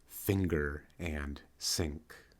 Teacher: the N phoneme turns into an ng allophone in certain situations